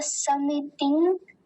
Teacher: जो दो रस्व इकार है उसका ध्यान देना है हम इसे लंबा नहीं खींचें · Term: ह्रस्व इकार